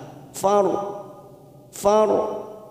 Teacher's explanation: kita baca ro tafkim karena sebelumnya ada harakat fathah